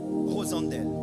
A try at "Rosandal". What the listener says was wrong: Oui, ouais, Rosandel, ça s'écrit comme ça, mais c'est Rosandal. Ça se prononce comme ça.